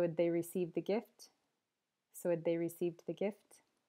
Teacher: Instead of had, the H disappears again. Change to schwa, you just get ud.